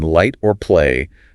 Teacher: For the L sound like in light or play, the tip of your tongue needs to make firm contact. Touch the ridge right behind your top front teeth.